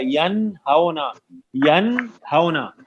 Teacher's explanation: بالکل غنہ نہیں ہوگا، کوئی غنہ کرے تو غلط ہو جائے گا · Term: نون ساکن کا اظہار